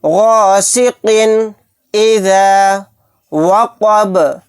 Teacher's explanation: شر غاسق، غاسق اذا وقب، با کو ساکن بنا کر پڑھیں گے کیونکہ یہاں پر آیت ہو رہی ہے اور با ساکن ہوگا تو یہاں پر قلقلہ بھی ہوگا۔ یہاں پر قاف کے نیچے تنوین ہے، تنوین کے بعد حمزہ آ گیا تو یہاں پر اظہار حلقی کا قاعدہ ہوگا، یہاں پر ہم اظہار کر کے پڑھیں گے۔